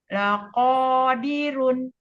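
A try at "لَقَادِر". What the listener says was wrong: Kalau sukun. Laqadir.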